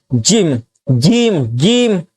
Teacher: جیم کہاں سے نکلتا ہے؟ تالو سے نکلا